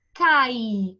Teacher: Vogal tem som forte, independente. O I, que é a minha semivogal, tem esse som mais baixinho